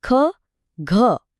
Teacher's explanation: आया ना वो हवा का एक तेज झोंका वही है महाप्राण की पहचान। · इनको बोलने में लगता है ज्यादा दम, ज्यादा हवा। चलिए ट्राई करते हैं। · ख में क और ह की ध्वनि है।